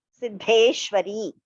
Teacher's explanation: The first Da is Alpaprana. The second one is Mahaprana.